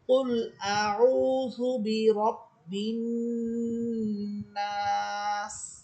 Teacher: আমরা যেই অক্ষের 6টা অবস্থা পড়েছিলাম, সিন হরফটা ওই 6 অবস্থার কোন অবস্থায় পড়ে না, এখানে জের এটা সাকিন হয়ে যাবে। আর নাস জবরের পর খালি আলিফ, এরপরে হরফ আমরা থামতেছি, এই জন্য এখানে 3 আলিফ পরিমাণ টেনে পড়তে হবে।